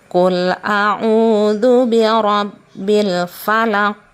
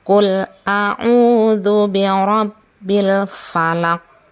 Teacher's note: ketika membaca Al-Falaq maka itu dipantulkan ya. ditahan dan dipantulkan. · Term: qalqalah